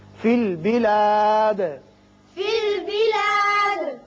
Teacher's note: دال پر قلقلہ کریں گے، اس لیے کہ یہ وقت کی وجہ سے ساکن ہو رہا ہے